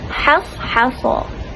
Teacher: Contohnya dalam surah Yusuf ayat 51, hasa, yang mana sa adalah huruf yang tebal. Jadi ha perlu dibaca tipis, jangan ikut pada huruf yang tebal.